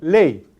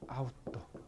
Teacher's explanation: Cuando se pronuncia la ley, la lengua se desliza desde la cima del diptongo hacia la semivocal. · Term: diptongo decreciente